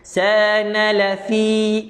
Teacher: panjang juga 2 harakat, ada mat asli ya sebelum huruf ya baris bawah